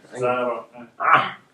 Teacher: It's kind of thick A from your throat. Okay, you can pronounce it like ah for now till you get like an ah sound. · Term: ayn